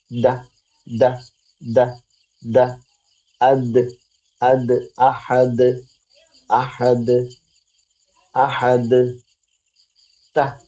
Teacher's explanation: മുരട്ട് ത മോണയിലല്ല മുരട്ടാണ് റൂട്ടിലാണ് മേലെ മുൻപല്ല എന്ന് പറയുമ്പോ രണ്ടു പല്ലുകൾ മേലെ മുൻപല്ലുകളുടെ റൂട്ടില മുരട്ടിൽ ദ നാവിന്റെ അറ്റം തറഫുൽ ലിസാൻ ദ ദ ദ ദ അദ് അദ് അഹദ് അഹദ് അഹദ്